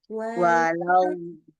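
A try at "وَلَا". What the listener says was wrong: Nah, jadi lanya harus la. Nggak boleh walau. Nah, itu nggak boleh.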